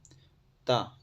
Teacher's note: ता इसका उच्चारण होता है दंत है